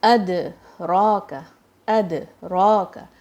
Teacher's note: Word کے اندر آپ نے سپریشن کر دی اور اس کو دو ورڈز میں ٹرن کر دیا ہے ایک ورڈ کو. تو یہ تمام قلقلہ کے اندر مسٹیکس ہو جاتی ہیں.